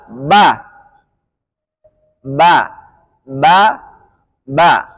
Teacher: nafas yang keluar ketika ucapkan Ba maka otomatis pengucapannya salah karena memiliki sifat jahr artinya sifat yang di mana nafas tidak keluar